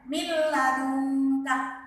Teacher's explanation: nun sukun bertemu dengan lam, harus tidak boleh mendengung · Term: idgham bila gunnah